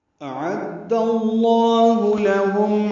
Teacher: حمزہ اقصی حلق سے، عین وسط حلق سے ادا ہوگا. اعد اللہ، عین کو دال سے ملانا ہے، دال کو لام اسم جلالہ سے ملانا ہے، لام اسم جلالہ کو دال کی زبر کی وجہ سے پر پڑھنا ہے.